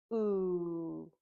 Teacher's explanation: your mouth was open and your lips were round and your tongue was towards the back of your mouth. Now let's make the ooh sound again and see if we can feel that buzzing or vibration.